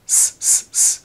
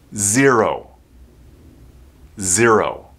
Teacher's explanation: there's vibration Z and there's vibration here in the vocal cords this is a voiced consonant sound so you'll have vibration · you're using a z sound the sound comes from here Z it's almost like an S sound s s except there's vibration Z and there's vibration here in the vocal cords this is